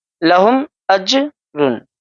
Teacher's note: جیم کی آواز کو ہم اس طریقے سے ادا کریں گے، ایسا پتہ چلے گا کہ اس کی آواز ٹکر کھا کر واپس ہو رہی ہے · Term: حروف قلقلہ